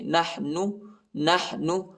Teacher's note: ہا کو وسط حلق میں پڑھنا ہے، یعنی گلے کے درمیانی حصے میں پڑھنا ہے